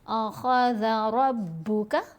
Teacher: रा को मोटा पढ़ेंगे और ख़ा को भी मोटा पढ़ेंगे, हुरूफ़ मुस्तालिया में से है।